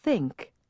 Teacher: now hold your finger on your throat again and say think there's no buzz on the th this time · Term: voiceless